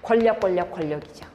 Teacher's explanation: 리을 앞에 있는 니은이 리을의 영향을 받아서 리을 발음되는 거. 유음화.